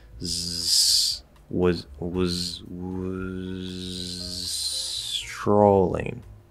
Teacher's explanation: Z and S, same position. All I do is drop the voice, I'm already in the right position.